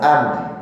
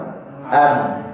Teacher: Masalan dicontohkan di sini, al-mimu sakinatun bitasaddum syafatain. Contohnya huruf mim yang sukun, itu bertemunya dua bibir, atas dengan bawah.